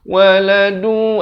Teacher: Waladu, asalnya waladun, tapi datang waw masuk beserta dengung. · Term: Idgham bi gunnah